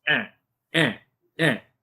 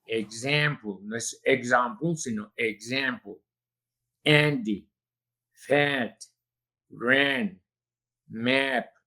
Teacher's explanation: empezamos por una vocal muy abierta que se produce emitiendo una e y una a seguiditas, pegaditas